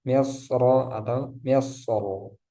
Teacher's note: Kata misr di surah Yusuf dibaca tafkhim karena berharokat fathah. Jadi meskipun wasal ataupun wakof di sini tetap dibaca tebal.